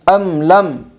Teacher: میم ساکن کے بعد لام آئی ہے اس لیے میم ساکن کو ظاہر کر کے پڑھے گی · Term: اظہار شفوی